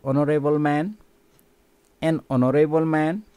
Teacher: In the second word, hospital, the initial sound is not silent, but in the first word, honorable, the initial letter H is silent.